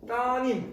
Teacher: 따님, 우리 이거 딸님 안 하잖아. 따님 다 이렇게 리을을 탈락시키죠. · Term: 리을 탈락